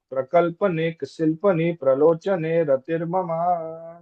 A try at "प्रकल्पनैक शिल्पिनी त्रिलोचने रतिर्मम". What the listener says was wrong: प्रकल्पनैक शिल्पिनी, शिल्पिनी शिल्पनी नहीं, प्रकल्पनैक शिल्पिनी त्रिलोचने रतिर्मम। शिल्पिनी, शिल्पिनी। हाँ, शिल्पिनी के बाद त ले सकते हैं। प्रकल्पनैक शिल्पिनी त्रिलोचने, ऐसा। त्रिलोचने, अगेन त्रिलोचने, तीन आंखें, त्रिलोचने तीन आंखें। त्रिलोचने रतिर्मम।